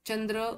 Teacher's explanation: चंद्र व जग या शब्दातील पहिली व्यंजने तालव्य आहेत.